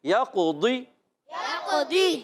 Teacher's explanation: قلقلہ بھی کریں گے، قاف موٹا بھی رکھنا ہے، اور ضاد موٹے حروف میں سے، ایکسٹرا موٹے حروف میں سے، ایکسٹرا موٹے حروف ہے کتنے؟